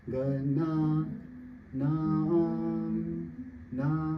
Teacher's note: Na, that Na is stretched A, and it's going high.